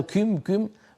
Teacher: الضم هذا ضم مقرون بكسره ضمه مقرونه بكثره وواوا مقرونه بياء هذا بسبب ايضا التاثر باللهجه · هذا النفس المتدفق زائد عن اللزوم بالنسبه للكافه العربيه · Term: الهواء المتدفق الزائد